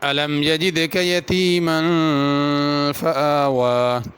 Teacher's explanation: آوا میں دونوں جگہ کھڑی زبر ہے، دونوں کو کھینچ کے پڑھنا ہے